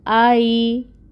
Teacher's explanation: حمزہ کے اوپر فتحہ ہے اور آگے یا ساکن ہے، یہاں پر لین کا قاعدہ ہوگا، لین کو نرمی سے ادا کیا جاتا ہے۔ آئی، تا باریک ہے، اس کے اوپر فتحہ کی حرکت 1 کاؤنٹ۔